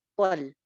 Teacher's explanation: لام باریک ہے، طل نہیں ہونا چاہیے کہ لام بھی ہم موٹا کر دیں